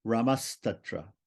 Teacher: If the second word begins with ta or ta, which are dentals, right, then it becomes a dental S. The Visarga becomes a dental S.